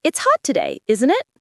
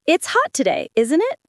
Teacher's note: Question tags can have rising or falling intonation depending on meaning. If you're sure, falling intonation.